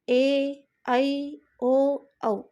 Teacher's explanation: इन स्वरों के उच्चारण में ह्रस्व स्वर की तुलना में दुगुना समय लगता है। अतः ये दीर्घ स्वर कहलाते हैं।